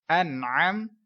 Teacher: نون ساکن کے بعد حروف حلقی کا عین ہے، اظہار کا قاعدہ گنہ نہیں ہوگا